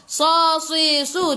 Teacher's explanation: Sad sifat hurufnya safir kena bunyikan tebal